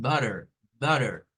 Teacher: Esta, por ejemplo, es como cuando en el inglés americano, los norteamericanos nos dicen esto como butter, nos meten una R acá, en vez de hacer la T, como la T está en medio de vocales